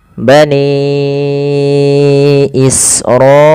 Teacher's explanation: Pada lafal bani ini panjangkan suara nnya sepanjang lima maaf empat atau lima harakat. Dan begitu pula pada lafal israila juga kita panjangkan empat atau lima harakat. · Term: mad wajib muttasil